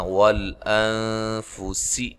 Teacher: نون ساکن کا اخفا ہے، باریک اخفا ہے، سین کو باریک ادا کرنا ہے